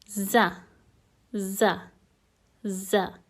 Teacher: the pronunciation of za basically happens when almost the tip of the tongue touches the lower teeth